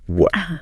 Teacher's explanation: It's like a little catch in the back of your throat. So what has no T sound at all. · But then in some parts of London, especially in fast speech, the T at the end of a word like what just becomes a glottal stop